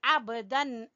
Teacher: बा के ऊपर हल्का सा कलकला करेंगे